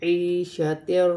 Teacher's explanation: یا ساکن سے پہلے زیر آ رہی ہے تو یا مدہ بنے گی، اسے ایک الف کی مقدار کھینچ کر پڑھا جائے گا